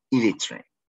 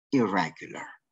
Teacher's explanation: the sound n changes into l in other words the sound n is assimilated into l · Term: total assimilation